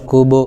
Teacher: با حروف قلقلہ میں سے آ رہا ہے، اس لیے ان کے مخرج ٹکر کھا کر الگ ہو جاتے ہیں، جیسے کاف واپش کوبو۔